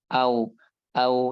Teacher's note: Nah, adapun kalau huruf wau dia keluar dari bibir juga cuma dia bentuk posisi mulutnya itu ya dalam keadaan membentuk posisi bulat gitu. Jadi membentuk bulat bulatan gitu ya.